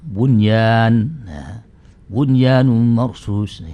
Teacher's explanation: Ada bunyan, ada ba nun. Kalau nanti bunyan dibaca buyan, nanti hilang asal usul dari huruf kalimat itu, menjadi hilang, nunnya hilang. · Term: izhar